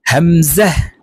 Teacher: হামজাহ হলকের শুরু থেকেই উচ্চারণ হবে